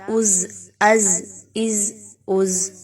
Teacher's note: اس میں سیٹی کی آواز کو لائیں گے، کیوں؟ کیونکہ یہ زا ہے، اس کو دال سے مشابہت نہیں دینی